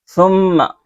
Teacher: میم مشدد کو ناک میں چھپا کر غنہ کے ساتھ پڑھیں گے